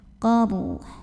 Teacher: ro-nya dibunyikan secara tafkhim karena huruf sebelumnya yang qaf barisnya fathah, maka ro-nya tebal ya. Qaruh. Kemudian ha-nya juga disukunkan.